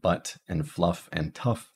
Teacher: Now we have the carrot, which is our mid-central unrounded lax vowel. These are in words like butt and fluff and tough. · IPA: [ʌ]